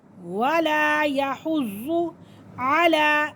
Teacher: खड़ी हरकत है, इसे हम खींच के पढ़ेंगे